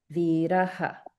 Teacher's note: a visarga that's at the end of a line. And so that gets pronounced as aha, viraha. Okay, so the full line is ramah khalu viraha.